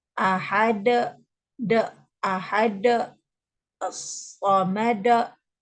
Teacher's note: mengakhiri bunyi qalqalah dengan huruf hamzah